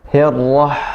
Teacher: Jadi agak suaranya agak ditekan, Pak. Hirrah dari tengah tenggorokan. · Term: ha kecil